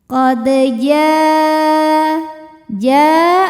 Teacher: Sebab ada huruf qalqalah yaitu dal yang sukunnya ini sukun asli dan ada di tengah bacaan kita. Maka kita bunyikan memantul dengan pantulan yang kecil. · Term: qalqalah sughra